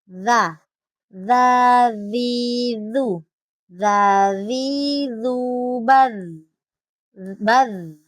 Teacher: Nah, di sini juga huruf za yang dipakai adalah huruf zal, di mana ini untuk makhrajul hurufnya ada di ujung lidah menyentuh gigi seri atas